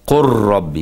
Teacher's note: قل ربي، اللام هنا ما تنطقش بيها خالص، إدغام كامل. قل ربي، كأن القاف راء على طول.